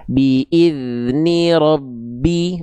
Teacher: Ba sukunya awal cukup dibaca saja, lalu masuk ke bi-nya. Sifat qalqalanya nggak ada. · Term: Idgham mutamasilain